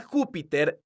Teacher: la palabra Júpiter es una palabra esdrújula porque su sílaba tónica es la sílaba Ju entonces tiene un acento ortográfico que se escribe en la vocal